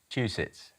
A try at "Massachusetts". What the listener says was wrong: Not quite. You're just missing out a syllable there. Massachusetts. Massachusetts.